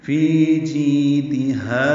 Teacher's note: فی جی اور ہا برابر لمبے کریں گے